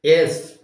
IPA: es